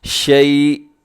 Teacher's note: وقف کریں گے تو آخر میں حمزہ ساکن ہو جائے گا